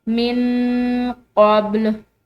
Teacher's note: यहाँ पर नून साकिन है और उसके बाद क़ाफ हरूफ इख्फा में से है, तो हमने यहाँ पर नून साकिन पर इख्फा करना है। मिन क़ब्ल, अब ये बा जो है ये बा हरूफ कलकला में से, इस पर ये रेड कलर जो है ये कलकला की अलामत है, तो यहाँ पर हमने कलकला करना है, यानी इस बा को हिलाते हुए अदा करना है।